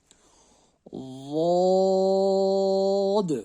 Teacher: اب آ گئی ضاد کی باری۔ ضاد، سب سے پہلی بات، ضاد میں ہمیں ز کی آواز نہیں نکلنی چاہیے ، ضاد جیسے پڑھتے ز نہیں ہونا چاہیے اس میں، ضاد،